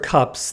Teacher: the s is pronounced as a normal unvoiced s because the preceding consonant p is an unvoiced consonant p is unvoiced so s is unvoiced as well due to